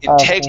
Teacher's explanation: with that T at the end, pronounce that like a D sound.